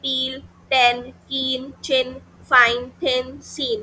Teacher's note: ऐसी जो साउंड्स होती हैं जिसमें ग्लॉटिस बेटा ज्यादा खुला हुआ होता है उनको बोलते हैं वॉइसलेस साउंड्स।